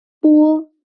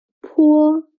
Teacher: The only difference in each pair is the strength of air.